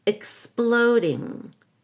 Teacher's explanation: The X in exploding is a KS. Don't forget the K and the S.